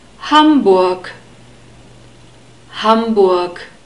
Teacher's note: the G is pronounced like a K because we have it at the end of a word. · stress is on the first syllable, like in most of the German words. And then we have a short U sound, again, the O sound, and the R is pronounced like an unstressed E sound, so Hamburg, Hamburg.